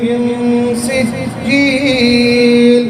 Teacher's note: ساکن کے بعد سین آیا ہے، سجیل کا سین آیا ہے، اخفا ہوگا یعنی ناک میں چھپا کے پڑھیں ، اخفا کا معنی ہوتا ہے چھپانا، مخفی جو کہتے ہیں